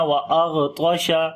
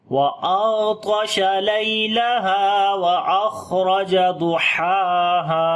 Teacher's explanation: غین کے اوپر صفت رخاوت ہوگی، یعنی آواز کو کنٹینیو کریں گے، یعنی کہ نرمی کے ساتھ پڑھیں گے ، کمزوری ہو جائے گی اس کے اندر آواز کے اندر،